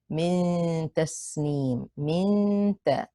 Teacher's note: Don't go straight to the point of articulation of the noon. Instead, prepare your tongue to be at the point of articulation for the ta while pronouncing the ghunna of the noon. And the ya here is mad arid li sukoon, extended for 2 or 4 or 6 counts. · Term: ikhfa haqiqi